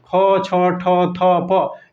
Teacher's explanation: ख, छ, ठ, थ, प, ये अघोष महाप्राण है